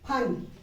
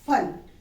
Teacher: फ, ओष्ठ, होठों से उच्चारण करना है इसका फ